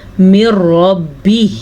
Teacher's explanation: را کو پر پڑھیں گے کیونکہ را کے اوپر زبر ہے